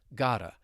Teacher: I'm going to link this phrase together. So I'm linking the flap T with the vowel sound